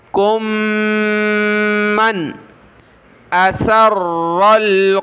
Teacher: अब नून पर हमने नाक में आवाज़ पैदा नहीं करनी, क्योंकि अगला हरफ हरूफ हल्की में से हरफ है, यानी हमज़ा, उससे पहले नाक में आवाज़ पैदा नहीं होती, तो यहाँ नून को नॉर्मल पढ़ना है।